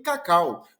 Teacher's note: encontro da vogal mais a semivogal, nesta ordem, na mesma sílaba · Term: decrescente